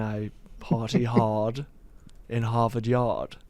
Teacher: Boston speech where they don't pronounce their R's